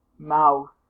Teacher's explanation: is dental and fricative